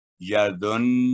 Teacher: उसको गुन्ना करेंगे लेकिन उसको जुम्बश पैदा ना हो नून में